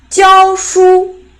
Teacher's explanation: When it is a verb, it's the falling tone.